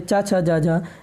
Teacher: चा, छा, जा, झा, ये तालब्य ध्वनियाँ हैं